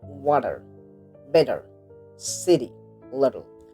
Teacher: In American English, t often sounds like d when it's in the middle of the word.